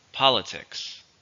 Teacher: 3 stress is on the first